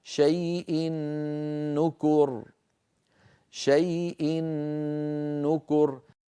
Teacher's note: أدغمنا التنوين الذي هو في الحقيقة نون في النون التي بعدها فصار النطق بنون مشددة